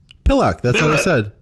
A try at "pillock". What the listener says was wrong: Not ock. Ick. Yes.